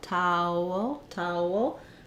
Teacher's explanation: As I move from the ow to the L, towel, there's a little bit of a gliding w in there.